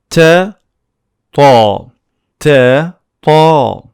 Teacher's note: The sound Ta is like a dark T. Almost the same place of articulation, but it's dark.